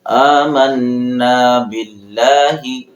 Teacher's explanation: یہاں پر لفظ اللہ کو ہم باریک پڑھیں گے